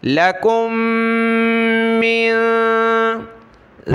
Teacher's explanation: میم کو نون کے ساتھ, ناک میں آواز پیدا کریں گے